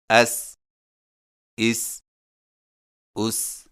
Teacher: سین سیٹی والی آواز، ادائیگی کے وقت زبان کی نوک کو سامنے والے نیچے کے دو دانتوں کے کناروں سے مضبوطی سے لگائیں